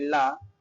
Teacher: तो ला में दोस्तों बोलते समय जो है हवा बगल से निकलती है, ठीक है, और जीभ जो है तालु को छूती है, इसलिए इसको पार्श्विक कहते हैं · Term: पार्श्विक ध्वनि